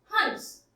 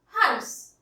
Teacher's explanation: इस हंस में अनुस्वार लगा है, इसका उच्चारण करते समय हवा नाक से निकलेगी, हंस। और ये हंस का उच्चारण करते समय हवा नाक और मुंह दोनों से निकलेगी